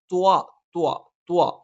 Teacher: നാവിന്റെ അറ്റം മേലെ മുൻപല്ലിനെ മുരട്ടിലും നാവിന്റെ അറ്റത്തിന്റെ മുകൾഭാഗം ആ മോണയിലേക്ക് ചേർന്നു നിൽക്കുകയും നാവിന്റെ മധ്യഭാഗം മുകളിലേക്ക് ഉയരുകയും ചെയ്യാം · പ്രത്യേക രീതിയാണ് യ നാവിന്റെ മധ്യഭാഗം ത് നാവിന്റെ അറ്റം മേലെ മുൻപല്ലിന്െ മുരട്ടിലാണ് നാവിന്റെ അറ്റം മേലെ മുൻപല്ലിന്റെ മുരട്ടിൽ സ്പർശിക്കുന്നതോടൊപ്പം നാവിന്റെ അറ്റത്തിന്റെ മുകൾഭാഗം ആ മോണയിലേക്ക് ചേർന്നു നിൽക്കുകയും നാവിന്റെ മധ്യഭാഗം മുകളിലേക്ക് ഉയരുകയും ചെയ്യും